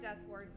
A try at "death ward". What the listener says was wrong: Every time you say, say it sounds like death word, but it's death ward.